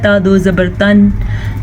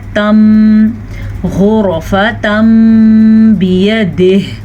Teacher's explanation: آپ نے میم کو پڑھنا ہے، نون کی آواز ختم ہو جائے گی۔ ویسے عام طور پہ ہوتا ہے تا دو زبر تن، لیکن ہم نے اس کو پڑھنا ہے تم، غرفتم بیدہ، اسے اقلاب کا قاعدہ کہتے ہیں۔